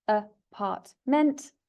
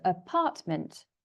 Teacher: It has 3 syllables, apartment, and the stress, so where the voice goes up, is on the 2nd syllable.